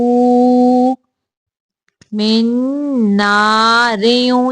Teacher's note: यहाँ पे रा को बारीक पढ़ेंगे, रा के नीचे दो जेरे हैं इसलिए